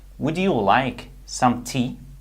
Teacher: When we have D plus Y, the result is a J sound. For example, would you like some tea?